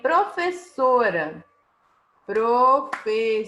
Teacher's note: sílaba tônica é a penúltima contando do fim para o início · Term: paroxítona